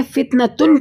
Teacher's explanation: تا کے ساتھ جو ہا ہے وہ نہیں پڑھی جا رہی. فتنتن ہا ہی اس طرح تھوڑی پڑھا جا رہا ہے کہ زبر زیر پیش اس پہ لگا کے اس کو پڑھ دیں ساتھ، نہیں، یہ نہیں پڑھا جا رہا کیونکہ یہ ہا ساکتہ ہے.